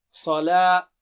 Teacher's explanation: صاد بہت موٹا اور اونچا ہے